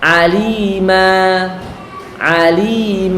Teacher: mengganti tanwin nasab atau fathatain pada saat wakaf dengan Alif yang dipanjangkan dua harakat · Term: Mad Iwat